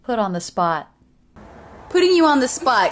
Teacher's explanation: a flap T or addy sound because it comes between two vowels when we link the words together